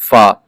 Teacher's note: شفوی مخارج فا حروف شفویہ اوپر کے دانتوں کے کنارے اور نچلے ہونٹ کے تر حصہ سے ادا ہوتا ہے